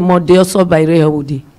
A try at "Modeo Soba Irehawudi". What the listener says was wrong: Hi, madam, no, they sing them like music. Pronounce them one by one, slowly. Make people know who you they talk about.